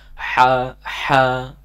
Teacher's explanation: o tapi b a kemudian huruf ha makhrajnya di tengahtengrokan ee memiliki sifat Hamas mengalir nafas dan juga memiliki sifat rakhwah mengalir suara